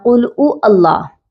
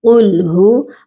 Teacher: اس ہا کی ادائیگی ہوتی ہے سینے والے حلق سے، آپ کی آواز سینے سے آنی چاہیے